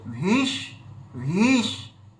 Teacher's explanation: ভীষ্মশ্চ বলার সময় ওই ভিটা দীর্ঘি রয়েছে, তার মানে আর একটু টানতে হবে